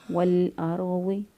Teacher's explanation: را ساکن سے پہلے والے حرف کی حرکت کو دیکھیں گے، زبر ہے لہٰذا اس کو پر پڑھیں گے۔ وَالْأَرْضِ، واد جو ہے زبان کی کروٹ اوپر کی 5 تڑوں کے ساتھ لگائیں تو واد ادا ہوگا۔